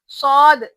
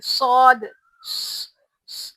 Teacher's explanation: सौद की आवाज में एक किस्म की ऐसा सीटी की आवाज रहती, सौद, ऐसा सीटी की आवाज आना, और सौद को मोटा पढ़ना।